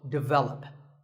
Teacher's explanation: of English as develop but the first syllable is actually dick and the stress is on the second syllable